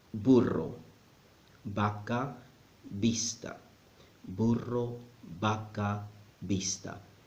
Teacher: the B and the V sound exactly the same in Spanish.